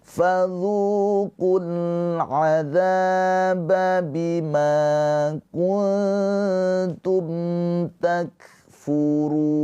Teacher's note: Karena ada mad thobi'i bertemu dengan huruf yang disukunkan yaitu nun. Nun ini disukunkan karena sebab berhenti maka ru mad arid sukun dibaca panjang. runya boleh dua harakat, empat harakat atau enam harakat.